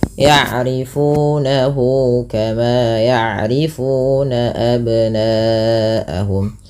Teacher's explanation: Nah, kemudian pada lafal nahu ada mad silah qasirah, yaitu mad yang terjadi ketika adanya hal dhamir yang berbentuk seperti ini atau bundar ya, maka dia dinamakan dengan mad silah qasirah, panjangnya sama dengan mad tabi'i yaitu 2 harakat